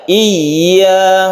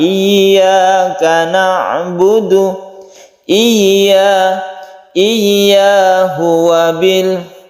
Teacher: Wa qadha rabbuka alla ta'budu illa iyyahu wa bil, hu-nya pendek, iya ini adalah mad tabi'i, ya-nya kemudian tasydid ya-nya harus kita perjelas tekanan dari i ke ya.